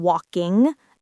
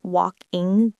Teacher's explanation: Make sure to make a soft NG sound, not a hard G